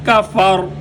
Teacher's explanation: را کی آواز بھی آنی چاہیے اور را کے موٹا ہونے کی آواز بھی آنی چاہیے